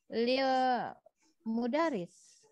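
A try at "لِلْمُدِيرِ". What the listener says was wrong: Lil, nggak ada huruf sin di sini. Lil. Iya, lil mudir ya. mudir. Ya, lil mudiri ya. Mudir.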